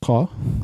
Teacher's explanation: Little q is the uvular plosive ka, found in Arabic and the Inuit languages.